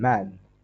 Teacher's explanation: both lips touch or get close together with the sound made by releasing sound through the nose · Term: m sound